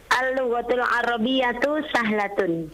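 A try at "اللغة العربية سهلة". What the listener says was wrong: Masya Allah, sahih.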